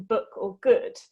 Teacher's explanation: pronounce that double o with the relaxed lax lazy low energy horseshoe sound like in book or good